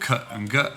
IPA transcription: k and g